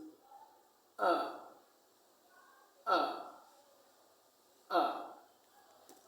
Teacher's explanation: When you say the sound, your mouth is open and the shape of the lips is oval. The tongue is low inside the mouth. The tip of the tongue is not near the lower front teeth. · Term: long sound